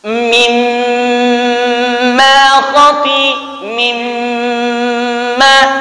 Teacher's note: hitungannya sampai 5 harakat beliau dengungkan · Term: wajibul gunnah